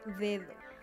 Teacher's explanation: La D suena d, es oclusiva, dental, sonora